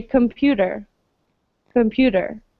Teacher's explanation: a lot of times we pronounce the t's especially in american english more as a d